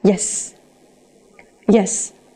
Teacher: dùng từ yes mà khi giọng đi xuống, nó là một câu khẳng định chắc nịch